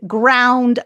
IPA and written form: graʊnd (ground)